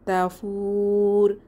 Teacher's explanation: তিন আলিফ টেনে ওয়াকফু করবো